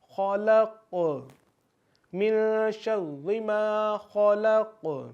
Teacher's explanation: من شر ما خلق، خو جو ہے خو، یہ بھی حروف مستعلیہ ہے، تو اس کو ہم پر یعنی موٹا پڑھیں گے۔ خلق، خلق، قوف پھر اسی طریقے سے قلقلہ ہے، تو آواز کو ہم دوبارہ ریپیٹ کریں گے، یعنی کہ آواز ہماری ہمیں دوبارہ سنائی دے